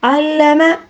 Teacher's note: عین کو باریک حلق کے درمیانی حصے سے ادا کریں گے